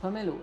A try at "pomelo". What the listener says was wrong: You're saying pomelo, it's pomelo. You're putting the emphasis on the wrong syllable. I thought it was the second syllable that was stressed, but it's the first syllable.